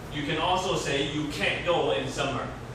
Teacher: Usually you won't hear the T.